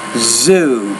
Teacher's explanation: You're almost pronouncing that like Sue, but zoo. Make sure you vibrate the Z consonant sound there.